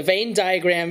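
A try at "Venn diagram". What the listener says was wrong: Second time I thought you said main diagram. It's Ven as in Ventus, like the Roxas copy in Kingdom Hearts Birth by Sleep, obviously.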